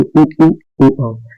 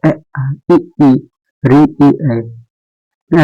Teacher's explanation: ओठ वृत्त के समान गोल न होकर फैले फैले रहते हैं, जैसे थोड़ा खुला रहते हैं, जैसे अ आ इ री ई ऐ अवृत्ताकार स्वर हो जाएंगे।